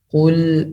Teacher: Qul, pertama qaf, tebal, lamnya ditipiskan setelah kena lamnya. Qul dengan cara melebarkan mulut.